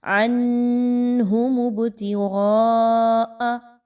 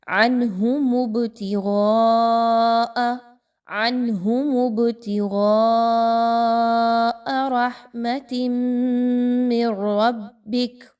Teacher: عین نون زبر عن کلیئر پڑھی جا رہی ہے، غنہ نہیں کیا جا رہا.